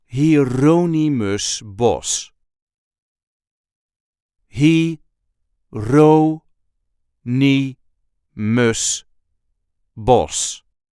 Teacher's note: There is a light emphasis on the second syllable of his first name